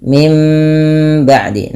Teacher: bunyinya dari Nun menjadi huruf mim ketika bertemu dengan huruf ba Apabila ada nun mati bertemu dengan ba suara nunnya dirubah menjadi suara mim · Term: iqlab